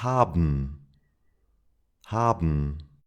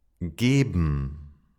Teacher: According to what I said, it should sound like haben, but that's kind of difficult to pronounce, bn, so we don't do that. When there is ben at the end of a word, it's pronounced like bm.